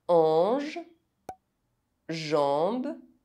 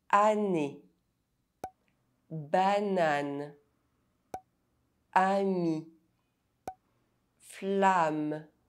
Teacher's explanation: AN and AM are pronounced [ɑ̃]. [ɑ̃] is a nasal vowel.